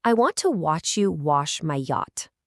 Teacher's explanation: In words like what or watch, the A sounds just like a short O. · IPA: /ɒ/